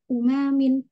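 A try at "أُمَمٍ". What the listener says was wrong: Jangan dipanjangin ya. Umamin gitu. Jama dari ummah.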